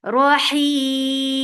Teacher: This temporary sukoon has turned this 2 counts long vowel into 4 counts long. That is making it mad arid li sukoon.